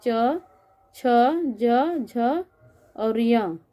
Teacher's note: च वर्ग के सभी ध्वनियों को तालु के स्पर्श से उच्चारित किया जाता है। इसको तालव्य ध्वनि कहते हैं। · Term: तालव्य ध्वनियाँ